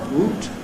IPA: w.uː.t